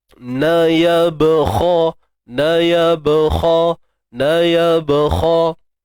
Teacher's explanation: kha pada atas kha tebal, isti'la angkat pangkal lidah, lu dua harakat mad asli.